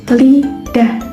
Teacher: Jadi aliran udara itu dihambat di tengah agar udara itu bisa lewat samping-samping lidah. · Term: sampingan